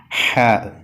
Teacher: പല്ലിൽ തട്ടാൻ പാടില്ല അൽ അൽ അത് കഴിഞ്ഞാൽ മൂന്നാമത്തെ അക്ഷരം ഹാ ആണ് ഹാ തൊണ്ടയിൽ കാറ്റ് നടക്കണം തൊണ്ടയുടെ മധ്യത്തിൽ കാറ്റ് നടക്കണം